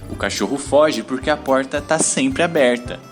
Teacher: a língua faz uma retroflexão indo até o fundo a boca